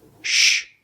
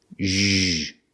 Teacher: Sh, no voice. Zh, same position with a voice.